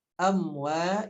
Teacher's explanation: idharnya yaitu dijelaskan bunyi mimnya. Amwa mad tabi'i dibaca 2 harokat. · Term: idhar syafawi